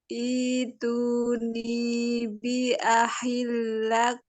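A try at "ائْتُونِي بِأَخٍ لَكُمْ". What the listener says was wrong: Ya, lebih bergetar.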